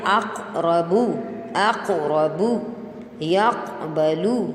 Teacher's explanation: تو آپ قاف کو تھوڑا سا ہلا کے پڑھیں گے